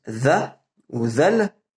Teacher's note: Ça ressemble à un D, mais avec la langue collée sur le bas des dents du haut.